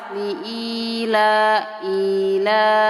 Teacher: Li Ila I dan la itu panjangnya sama dua harakat Mad thi'i yang pertama Ya Sukun didahului kasrah yang kedua fathah